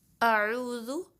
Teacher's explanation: اعوذ اس میں حمزہ کو شارپلی پڑھنا ہے، عو میں آئین کو جو ہے درمیانہ حلق سے ادا کرنا ہے، کیونکہ اس کا جو مخرج ہے وہ درمیانہ حلق ہے، وسط الحلق، ٹھیک ہے۔